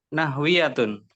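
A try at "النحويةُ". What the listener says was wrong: Nah, ini enggak tanwin nih Pak ya. Domah saja. At-Taraqibun Nahwiyatu. Nahwi. Nahwiyatu. ini yaknya sukun Pak ya. Jadi panjangin aja.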